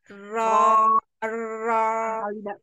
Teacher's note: pangkal lidahnya naik biar dia tebal gitu.